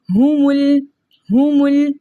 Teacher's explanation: हमज़तुल वसल दरमियाने कलाम में आने की वजह से हज़फ हो गया तो हमने इस मीम को लाम के साथ मिलाकर पढ़ा।